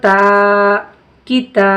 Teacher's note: اب دیکھیے یہاں پہ ہم تا کو کھینچ رہے ہیں کیونکہ زبر کے ساتھ الف لگ کر آیا ہے